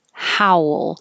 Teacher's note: how your lips get small for the ooh how will and then kind of come back for the l